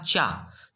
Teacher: चा आपका तालव्य से होता है, तालु, है ना? तालु से होता चा।